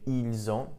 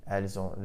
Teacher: notice the pronunciation, the S actually does get pronounced this time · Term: liaison